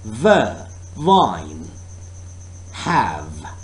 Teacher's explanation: Air is forced to the upper teeth and lower lip. Again, this is a labiodental sound.